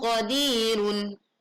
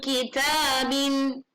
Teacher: saat nun sukun atau tanwin bertemu huruf qaf, bunyi dengung yang dimunculkan terdengar tebal. Sedangkan saat menghadapi huruf kaf, bunyi dengung atau ang yang kemudian kita dengar menjadi tipis suaranya.